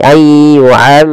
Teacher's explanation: Kemudian pada lafal ra di sini wajib ditebalkan, jangan dibaca ayyu'ammar tapi ayyu'ammaru, tebal ra-nya karena dia ra tafkhim